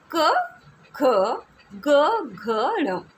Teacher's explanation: क ख ग ण में क्या विशेषता है बेटा कि ये कंठ से बोले जाते हैं। इनका जो उच्चारण स्थान है वो कंठ है। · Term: कंठ की ध्वनि